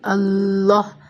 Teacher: لام کو دو لام کے برابر پڑھیں گے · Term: شدہ